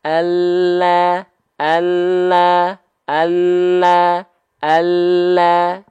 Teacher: lam itu keluar dari tepi lidah tapi bukan full tepi lidah bukan full samping lidah bukan full Sisi lidah tapi sisi lidah bagian depan yang kiri · Tepi lidah kiri, tepi lidah depan kiri, tepi lidah depan kanan menyusur sampai ke ujung lidah, nempel ke langit-langit. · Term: huruf lam